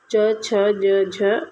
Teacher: च, छ, ज, झ यह हमारा तालव्य व्यंजन है